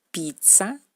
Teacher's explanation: Esta consonante da el sonido ts, ts.